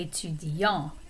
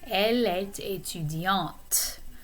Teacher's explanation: notice that the consonant sound at the end of that adjective gets pronounced.